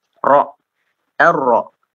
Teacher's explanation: Karena dia untuk huruf ro ini, ya, otomatis karena dia ketika pengucapan itu lidah mesti dia tidak menempel, ya. Ro langsung terbuka. Ro, ar-ro. Ya, tidak seperti lam.